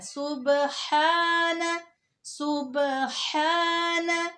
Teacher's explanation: با پہ کلکلا کرنا ہے